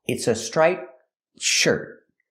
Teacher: When I put it together with a consonant, shirt, you don't really hear the T. It's a stop T.